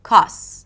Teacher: Or even dropping consonants, and then the word 'cost' may sound like 'cos'